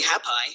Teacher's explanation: hap is stressed and py is unstressed